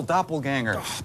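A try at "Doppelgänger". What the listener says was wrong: Honor the umlaut, Doppelganger. Round the lips, Doppelganger.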